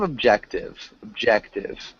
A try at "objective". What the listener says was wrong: Close. It's objective. And so remember, you don't want to emphasize the beginning, but the middle. So objective.